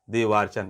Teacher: दोनों अ मिलकर के बड़ा आ हो गया, अर्थात दीर्घ हो गया। तो दीर्घ हो गया तो यहाँ पर देवार्चन हो गया, बड़ा वा, देवधन अर्चन बराबर देवार्चन।